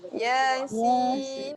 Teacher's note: Ya 2 harakat, sin 6 harakat. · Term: mad asli harfi